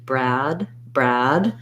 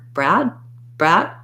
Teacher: strong d i probably will do a stop d brad brad if i hold the vowel longer people will hear it as a d rather than bra brat if i hold the vowel shorter they'll